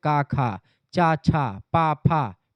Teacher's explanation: जिन ध्वनियों के उच्चारण में स्वर तंत्रिकाओं में कंपन नहीं होता उनको अघोष और जिन ध्वनियों के उच्चारण में स्वर तंत्रिकाओं में कंपन होता है उसको हम लोग सघोष कहते हैं।